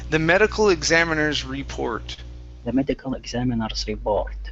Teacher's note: so connect that s to the r